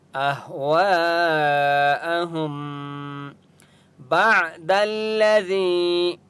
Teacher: اہم میم کے اوپر سکون ہے لیکن یہاں پر ہم نے غنہ کرنا ہے